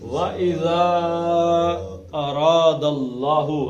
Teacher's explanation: اللہ کے پیچھے زبر آ گئی تو اللہ کا لام موٹا